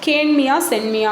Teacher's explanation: இங்கு மியாவில் உள்ள இகரம் குறைந்து ஒலித்து குற்றியல் இகரம் ஆயிற்று